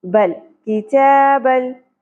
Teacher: لام ساکن کو ہم با کی زبر کے ساتھ جوڑ دیں گے